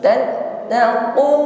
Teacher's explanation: Tattaqu ditekan. Tattaqu huruf qaf syiddah kuat tekanan saat mengucapkan hurufnya, bukan lemah, tidak ada desis yang mengalir ketika mengucapkannya. Jangan tattaqu taku bukan ku o qi u kuat.